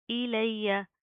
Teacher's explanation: حمزہ زیر ای، لام یا زبر لی، یا زبر یا. ایلیہ، یا کے اوپر شد آ رہی ہے، سختی سے جما کر پڑھیں گے